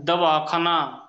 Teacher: आपण जर म्हणलं धनुष्य, ध ध चा उच्चार करताना जीभ दाताला लागते. दवाखाना, द चा उच्चार करताना जीभ दाताला लागते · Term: दंत्य वर्ण